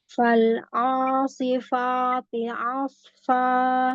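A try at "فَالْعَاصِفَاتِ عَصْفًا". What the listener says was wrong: Oh, fa jangan naik. Ainnya jadi tebal itu. Huruf ainnya masih terbagi ke hidung. Turunin lagi makhrajnya, turunin lagi. Itu ke atasan itu.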